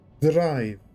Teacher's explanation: a Japanese R, which you do at the front of the mouth, not at the back of the mouth. So, it turns into drive, which perhaps maybe is a little bit transian as well.